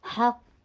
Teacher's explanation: قوف فتحہ کے لیے جبڑے کو کھولیے اور قوف کو ہیوی کیجیے.